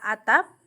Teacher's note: P pada atap disebut bunyi stop implosif